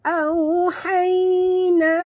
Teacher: Ringan saja. Ya, sifatnya lin lembut, jadi bila kita menyebut hai ini seperti kita tersengih · sifatnya lin lembut, jadi muncungkan mulut ketika menyebut au